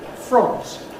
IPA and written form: frɒnt (front)